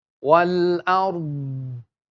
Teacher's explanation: The dot is pronounced from the left side of the tongue touching the upper teeth. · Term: istatala